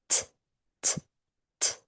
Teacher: So if you want to start with that S sound as a base, you can. Now, instead of pushing the air through consistently, you are going to use your tongue to tap the back of your teeth · The method I use is behind my teeth. T is a short sound. It is a slight puff of air unlike the letter S which is a continuous air stream.